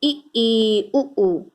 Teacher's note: जिन स्वरों के उच्चारण में मुख द्वार लगभग बंद रहता है, मतलब कि थोड़ा बहुत खुले, ना के बराबर, वो संवृत स्वर हैं।